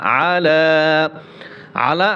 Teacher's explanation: আলা আলা আইন খারা জবর, আইন জবর আ, লাম খারা জবর লা। আলা আলা আইন গলার ভিতরে চাপিয়ে বলতে হবে